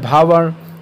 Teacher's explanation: भावर्ण जो है ये स्पर्श वर्ण है, घोष वर्ण है, ओष्ठ वर्ण है और महाप्राण वर्ण है